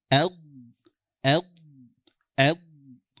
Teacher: menggesekkan tepi lidah dengan gigi geraham atas bagian dalamnya ya sehingga dia memunculkan suara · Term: istitalah